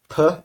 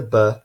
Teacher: and the buff we make these sounds the same way but in the case of puff our vocal cords aren't vibrating and in the case of ba our vocal cords are vibrating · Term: voicing